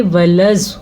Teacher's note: اس مد کو خاص طور پہ آپ نے ادا کرنے کا درست طریقہ سیکھنا ہے. لام کو لمبا نہیں کریں گے، لام زواد کے ساتھ جڑ رہا ہے